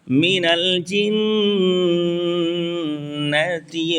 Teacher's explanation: جیم بیچ زبان تالو سے مل کر جیم ادا کریں گے